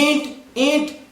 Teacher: नासिका में कंपन हो रहा है ना, नासिका में जब कंपन हो रहा है तो ये अनुनासिक कहलाएगा, यानी यहां पर चंद्र बिंदु है।